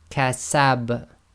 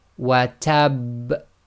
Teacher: So the last one there with the shadda, the highest intensity, you intensify the echo on purpose so you know that there was a shadda that wasn't actually read.